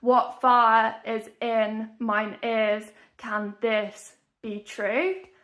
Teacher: 10 syllables and every other syllable is emphasized